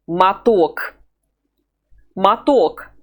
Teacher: the first O is weak, and we will pronounce it A. The second O has the stress over it, so it's strong, and we'll pronounce it O.